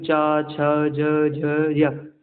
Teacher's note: चा वर्ग देखो चा, छ, ज, झ, य, ये तालु से बोले जाते हैं, और इसमें या और सा से सलजम वाला सा बोला जाता है।